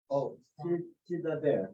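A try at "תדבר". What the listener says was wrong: Good. Tidaber. Good.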